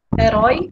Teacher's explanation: Como a gente tem um caso, a palavra herói, é um caso de ditongo, porque a gente acabou de ver que ficam as 2 vogais na mesma sílaba. Quando a gente tem esse ditongo aí, do herói, em que o O, que vem primeiro, né? É a vogal que vem primeiro. É mais forte. E depois o I, ele é mais fraco.